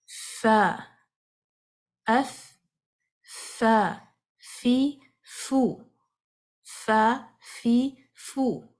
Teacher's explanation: سامنے کے جو فرنٹ کے 2 دانت ہیں، ان کا جو کنارہ ہے نیچے والے ہونٹ کے اندرونی حصے کو ٹچ کرے گا، اور آپ یہاں پہ سانس کو جاری کریں گے